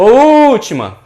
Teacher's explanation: Qual é que dura mais? O U. Então esse U aí, ele vai ser a sílaba tônica, é uma proparoxítona.